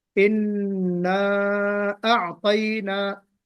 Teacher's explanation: इन्ना गुन्ना भी करना है और इसको खींचना भी है